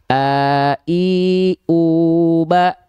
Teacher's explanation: cara melafalkan huruf hamzah itu dilafalkan dari dari pangkal tenggorokan.